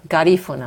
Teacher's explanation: Garifuna with a stress on the second syllable.